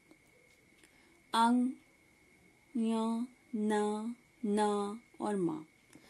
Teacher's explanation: हर वर्ण का अंतिम अक्षर उसमें उत्पत्ति स्थान के जो नाम है, जैसे कंठ प्लस नासिका, तालु प्लस नासिका, मूर्धा प्लस नासिका, दंत प्लस नासिका और ओष्ठ प्लस नासिका। इन वर्णों का उच्चारण कंठ आदि स्थानों के अतिरिक्त नासिका की सहायता से भी किया जाता है, मतलब इसका उत्पत्ति स्थान तो है प्लस नासिका भी इसके उच्चारण में सहयोग देती है, इसीलिए इसे नासिक के वर्ण भी कहा जाता है।